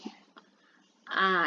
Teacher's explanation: A ya, jadi mulutnya ini kan berasal dari pangkal tenggorokan ya. A, jadi terasa gitu keluarnya suara dari pangkal tenggorokan. Kalau harokatnya fathah dibuka ke atas mulut kita A. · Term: hamzah